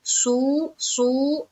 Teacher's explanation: स्वाद को मुंह भर कर बोलेंगे, स्वाद, सू।